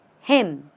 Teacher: there's no raising your pitch there's no fall in your pitch you just say it him say it as him and what